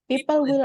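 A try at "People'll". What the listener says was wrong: Wait. We shorten We shorten the will into apostrophe LL. People will. There's no W. People will. Don't say it slowly. As I said, the point of shortening words is because you want to sound faster, because you want to make the sentence shorter. So if you say people will, it's weird.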